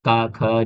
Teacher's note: ऐसे व्यंजन जिनके उच्चारण में स्वर रज्जुओं में कोई कंपन नहीं होता, यानी आवाज हल्की होती है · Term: अघोष व्यंजन